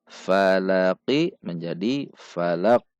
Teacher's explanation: Namun karena di akhir kalimat, maka huruf qaf disukunkan. Karena huruf qaf termasuk huruf qalqalah, maka ketika sukun dibaca memantul.